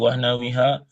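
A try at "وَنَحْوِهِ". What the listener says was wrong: Mana ha? Mana ha ini? Ini bukan ha, nggak ada alifnya. Ah, wa nahwihi jadi.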